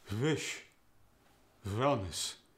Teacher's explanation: The W sound at the beginning of words gets the V sound.